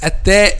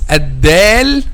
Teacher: the difference between te and del okay is the vibration of the vocal cords